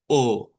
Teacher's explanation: Y esta es la misma O, pero en vez de hacer la redondez, hacemos O, con los labios estirados.